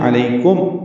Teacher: میم ساکن پہ اظہار شفوی ہے، علیکم، یہ ہونٹ بند ہوں